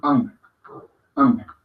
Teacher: No se me confundan con la G al final del ang, porque no es anga, no, ang. Es una AN gutural, ang, de sonido corto, breve